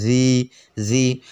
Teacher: এই যে জি আমরা উচ্চারণ করলাম, জিটা নরম করে উচ্চারণ করতে হবে, জিব্বার আগা ওপর দুইটা আগার সঙ্গে লেগে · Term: জি নরম করে